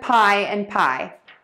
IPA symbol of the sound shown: paɪ